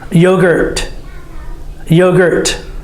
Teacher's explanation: need to hear the T sound just like the D very quiet